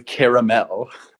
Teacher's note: so the third the second syllable really does get pronounced